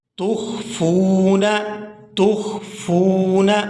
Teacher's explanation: واو ساکن سے پہلے ہم نے حرف کو نہیں دیکھنا بلکہ حرکت کو دیکھنا ہے کہ واو ساکن سے پہلے اگر پیش ہوگی تو وہ واو مدہ ہوگی اور اس کی وجہ سے اس کے ساتھ جو بھی حرف ملے گا اس کو 1 سیکنڈ یعنی 1 الف مقدار کے کھینچ کے ادا کریں گے